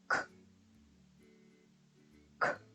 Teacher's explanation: 앞에서 연습했던 C가 내는 소리와 같습니다. 성대를 울리지 않고 입안 깊숙이 목구멍 앞쪽에서 소리가 나오도록 크 하고 성대를 울리지 않고 소리를 내시면 됩니다.